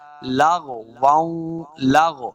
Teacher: یہ جو غین ساکن ہے اور رفع مستعلیہ سے آگے اس کو موٹا پڑھنا ہے